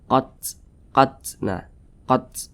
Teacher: Kemudian dia sukun. Nah, ketika membunyikan huruf ta sukun itu ada aliran nafas yang keluar.